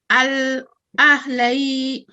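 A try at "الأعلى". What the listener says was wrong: Okay, that's ayn. Yeah, it's not ha, it's ayn. So with the waqf, without the waqf, you're saying al-a'la. With the waqf, what would you say?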